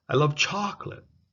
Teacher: there is a higher pitch so you see I love chocolate so the voice goes up in Pitch